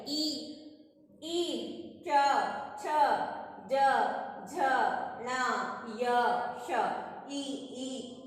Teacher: इसमें जीभ हमारी ऊपर तालु पर चिपक रही है। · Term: तालव्य